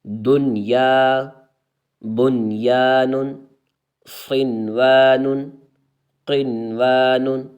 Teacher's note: ان چار کلمات میں نون ساکن کے بعد حروف یا الملون ایک کلمے میں آنے کی وجہ سے ادغام نہیں بلکہ اظہار مطلق ہوگا، اس لیے ان چار کلمات میں غنہ نہ کریں۔